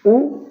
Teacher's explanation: ऊ बोलिएगा तो आपका जो ओष्ठ है वो गोलाकार हो जाएगा। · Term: वृत्तमुखी स्वर